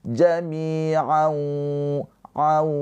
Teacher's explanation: Ketika nun sukun atau tanwin bertemu dengan huruf wau, maka hukumnya adalah idgham bighunah. Cara bacanya tanwinnya ini dileburkan ke huruf wau. Ditahan dua harakat sambil dengung.